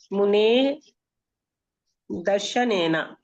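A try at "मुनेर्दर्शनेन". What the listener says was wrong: మునేహే రావాలి, ఎందుకంటే ఆ దర్శనేనలో దాకి పైన రేఫ వచ్చింది కదా, ఆ రేఫ ఇదన్నమాట. మునేహే అంటే ముని యొక్క దర్శనము చేత.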